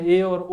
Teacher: अर्ध समृत स्वर है जिसमें मुख जो है वो आधे से कम खुलता है, जिसमें ए और ओ आते हैं।